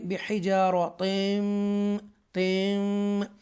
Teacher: इदगाम करेंगे हरूफ यरमलून जो 6 लेटर्स हैं उनमें से मीम आ रहा है तनवीन के बाद, तो लिहाजा इदगाम होगा